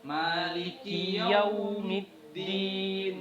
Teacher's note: itu ketika menyebutkan yau itu usahakan lebih seperti dibulatkan itu bibirnya